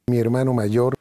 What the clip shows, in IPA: ma'ʝoɾ